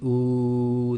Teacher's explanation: the back of your tongue goes up and your lips make a nice little round circle